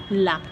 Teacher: जो वायु है वो जिह्वा के दोनों तरफ के पार्श्वों से निकलती है, इसीलिए पार्श्विक व्यंजन कहता है।